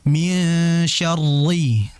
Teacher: Syarri itu tipis walaupun dia bertasydid kembali kepada hukum asalnya. Ro kasrah yang berharakat kasrah dia tipis walaupun dia bertasydid. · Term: ro bertasydid